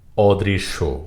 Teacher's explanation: দটি একবারে উচ্চারিত হবে দুইবার হবে না